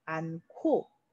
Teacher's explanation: 히읗과 기역이 합쳐지면서 발음은 않고 이렇게 거센 소리로 발음하게 되죠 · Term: 축약